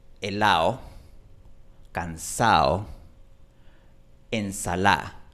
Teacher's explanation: Como ya dije, en Chile, cuando una palabra termina en ado o termina en ada, por lo general esa D desaparece por completo · Los chilenos omiten por completo esta D cuando está en palabras que terminan en ado o en ada.